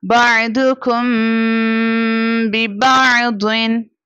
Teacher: اور یہاں پر میم ساکنہ کے بعد again با letter here is it means we have to do اخفاء شفوی، we have to do غنہ. بَعْضُكُمْ بِبَعْضٍ.